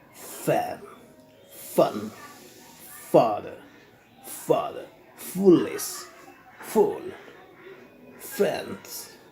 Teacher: your lower lip is under your upper teeth